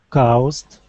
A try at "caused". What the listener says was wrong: Instead of ow. Caused. Just like the word ought, we say caused. Caused.